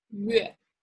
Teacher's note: when you pronounce 月, round the lips first